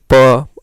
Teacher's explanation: ओठ हमारा देखिए प, दोनों लिप्स क्या हो रहे हैं, सट जा रहे हैं। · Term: प वर्ग